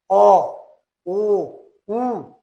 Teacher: Veja bem, elas saem assim, tem que articular bem os lábios, né? São produzidos quando recuamos e elevamos gradativamente a parte posterior da língua em direção ao véu palatino, arredondando e estreitando gradativamente os lábios. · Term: posteriores